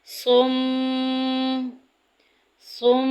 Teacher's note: صم میم مشدد پورے قرآن پاک میں جدھر جدھر بھی آئے گا وہاں غنہ کریں گے، ناک میں آواز لے کے جائیں گے۔